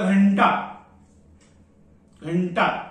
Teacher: अनुस्वारानंतर येणारा अक्षर कोणता आहे ट मग ट ची तालिका कोणती आहे ट ठ ड ढ ण म्हणून इथे ण चा उच्चार येणार